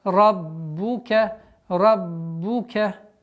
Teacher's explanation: Раббука, ра твердый, удваиваем, четкое произношение звука огласовки. Дамма, раббука, раббука.